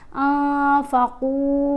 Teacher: پھر نون کے اوپر ہم نے اخفا کرنا ہے، نون ساکن کے بعد فا ہے، فا حروف اخفا میں شامل ہے، اس لیے ہم نے نون کی آواز کو ناک میں چھپا کر پڑھنا ہے۔